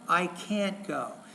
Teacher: when it's negative you stress the auxiliary and the main verb